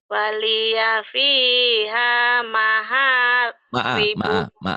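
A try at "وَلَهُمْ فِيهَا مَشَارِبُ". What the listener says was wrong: bukan maha.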